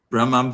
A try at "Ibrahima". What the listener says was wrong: No, the E is there. The E is there.